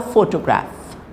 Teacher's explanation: photograph the stress is on the first syllable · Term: primary stress